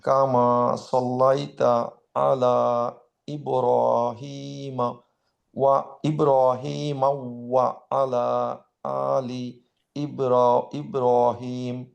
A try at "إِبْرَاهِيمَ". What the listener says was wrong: না, এখানে মাউ যে বলছেন, মাউ বলার জন্য কিন্তু ইব্রাহিমান নাই, ওখানে আছে। তাহলে ইব্রাহিমাউ কেন হচ্ছে? হুম, আইদার ইব্রাহিম অথবা ইব্রাহিমা।